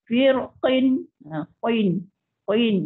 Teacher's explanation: Kita sebut tu betul-betul di pangkal anak tekak kita.